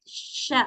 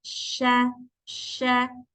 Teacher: makhrajnya huruf syin itu kan ada di tengah lidah ya dengan langit-langit Tapi dia itu enggak menempel ya si Tengah lidahnya itu enggak ditempelkan ke ujung eh ke langit-langit